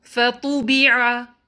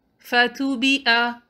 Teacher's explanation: اس word میں طا heavy letter ہے، اس کو تا کی طرح نہ پڑھیے، کوشش کریں فا با عین کو لائٹ رکھیں اور عین کو مخرج سے نکالیں، نہ کہ اس کو حمزہ سے بدل دیں۔